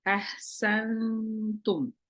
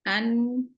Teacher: jadi ketika nun sukun ketemu huruf Ta Maka nunnya dibaca samar ahsantum beda dengan ini an dibaca jelas si lidahnya ditempelin ke